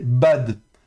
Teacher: peu importe que le dalet est un dagèche ou non, il se prononcera toujours occlusif et non pas à l'ancienne. Normalement un detalet quand il est sans bégatfat, on prononcerait the comme comme un th en anglais quoi.